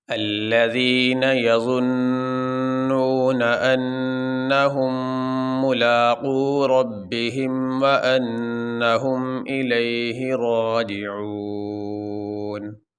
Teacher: یہاں پہ آخری حرف ہے نون، اس کے اوپر ہے زبر، تو وقف کرتے ہوئے نون کے اوپر جو زبر ہے وہ نہیں پڑھی جائے گی، نون پڑھا جائے گا لیکن نون کو ساکن پڑھیں گے